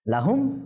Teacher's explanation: এখানে যেহেতু মিমও আসে নাই বাও আসে নাই, ইজহারে শাফাবি হয়েছে, গুণনা হবে না।